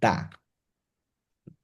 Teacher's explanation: উপরের দাঁতের গোড়া জিহ্বার আগা স্পর্শ করে উচ্চারণ হয় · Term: দাল